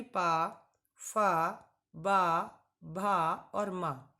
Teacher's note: इन सभी को जब आप बोल रहे होंगे तो आपके ऊपर और नीचे वाले दोनों ही ओठ आपस में स्पर्श कर रहे होंगे, टकरा रहे होंगे। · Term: ओष्ठ